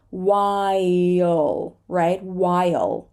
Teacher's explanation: remember the extra schwa before the dark L